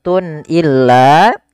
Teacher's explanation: Kemudian pada lafal Tun illa di sini ada izhar halqi yaitu suara tanwinnya harus dibaca dengan jelas karena ketemu dengan huruf hamzah dan ini kita namakan dengan izhar halqi izhar artinya jelas dari